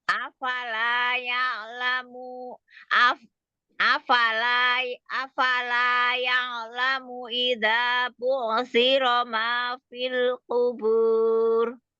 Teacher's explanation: Fil jangan dilepas dulu. Jangan jangan buru-buru dilepas ujung lidahnya.